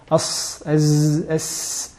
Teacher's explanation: On utilise l'extrémité de la langue en la collant à la base de la face interne des incisives inférieures, en mettant en valeur ce son qui passe entre les incisives supérieures et inférieures.